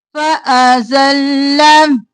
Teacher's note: زا سختی سے اور لام دو بار